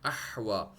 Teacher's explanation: سانس کی نالی میں نے ذرا سٹریس فیل کیا، اس کو نیرو کیا، اور پیچھے کی طرف میں نے دیوار کی طرف پش کر کے میں نے پڑھنے کی کوشش کی تو ہا صحیح طرح سے ادا ہوا ، احوا۔ آگے یہ یا اس کی کوئی ویلیو نہیں ہے،